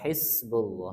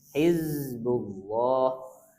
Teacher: Ini huruf-huruf yang mirip-mirip dia satu makhraj. Bedanya sin keluar Hamas, za tertahan nafasnya.